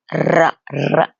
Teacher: ra, as we know, is when the tongue vibrates the upper palate